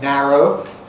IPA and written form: ˈnæroʊ (narrow)